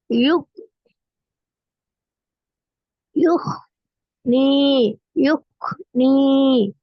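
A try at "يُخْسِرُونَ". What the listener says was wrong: நீங்க எழுத்து கூட்டுற நேரம் யோஹ்ன்னு தான் ஓதுறீங்க. ஹாவை தான் உச்சரிக்கிறீங்க. யோஹ்.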